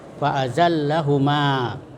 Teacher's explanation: Nah, di situ ada mat tabi'i. Ya, ada fathah ma bertemu dengan alif. Ya, bertemu dengan alif, panjangnya itu 2 harakah atau 1 alif